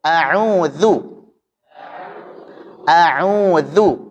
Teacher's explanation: Jadi a, hamzah tipis, au, ain tipis, waw, wu tipis, bukan u, tapi wu, dzu juga tipis. Jadi semua huruf pada a'udzu tipis semua.